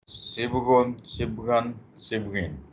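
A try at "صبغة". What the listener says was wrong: نہیں یہ صبغتن ہے، گولتا بھی ہے اس میں.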